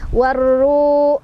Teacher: Warru, ru mad tabi'i karena dhammah bertemu waw sukun, dibacanya panjang 2 harokat.